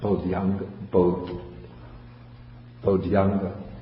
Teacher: And so when you combine bodhi plus anga, then you would get, in the first place, you would get bodhyanga, because when the I meets an A, the I turns into a Y